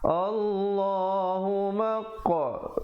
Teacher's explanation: ada pantulan qalqalah di situ. Qalqalah sughra